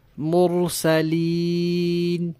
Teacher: مرسلین کی یا کی ادائیگی کے وقت آواز ناک میں نہیں جانی چاہیے۔ مرسلین ایسے نہیں پڑھنا، مرسلین۔